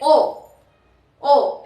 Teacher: वृत्त जिसमें होठ हमारे गोलाकार हो रहे हैं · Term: वृत्त मुखी